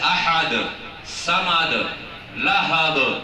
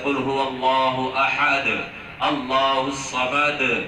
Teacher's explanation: جیسے قطب جد ہے قلقلہ کے حروف، جیسے احد، صمد، لہب، جیم ہے نا، افواج، قاف، طا، با، جیم، دال. یہ حروف ایسے ہیں کہ ان پہ ہمیشہ لوٹتی ہوئی آواز ہوتی ہے. جیسے قل هو اللہ احد، اللہ الصمد ہے نا.